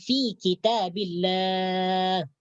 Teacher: fi kitabillah ni panjang mat, ya, bertemu dengan ha yang dibaca sukun karena waqaf. Jadi ini disebut mad arid lis sukun.